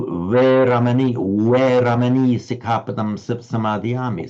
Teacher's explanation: in Thai, they don't have a V sound, and they don't quite have the modern Northern Indian V sound. They pronounce it as a pure W.